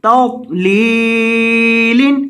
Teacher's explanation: لام کو لمبا کریں گے کیونکہ لام کے بعد یا مدہ ہے